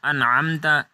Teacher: صراط الذین انعمت علیہم، اب انعمت نون جو ہے اس کے اوپر قلقلہ نہیں کرنا بلکہ اس کو ساکن کر کے پڑھنا ہے۔ انعمت علیہم، عین جو ہے اس کو بھی حا کی طرح وصل حلق سے ادا کرنا ہے۔